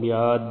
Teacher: دال پر کلکلا کریں گے